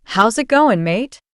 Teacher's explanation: Australian English, known for its nasal tone and informal slang.